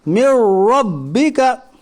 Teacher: नून साकिन के बाद हुरूफ यरमलून के 6 हरफों में से रा है इसलिए इदगाम ताम होगा, यानी मिलाकर बग़ैर गुन्ना के जल्द पढ़िए। रा मुशद्दद के ऊपर ज़बर है इसलिए रा मुशद्दद पुर पढ़ी जाएगी।